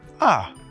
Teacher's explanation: The fourth tone is a falling tone. It's like when somebody hit you suddenly.